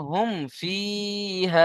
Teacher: ইয়া মাদ্দাকে একালিফ পরিমাণ টান দিয়ে পড়তে হবে · মিম সাকিনকে বিনা গুণনায় জাহির করে পড়তে হবে, একে ইজহারে সাফাবি বলে।